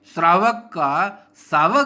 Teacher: तालव्य और मूर्धन्य स के स्थान पर दंत्य स हो जाता है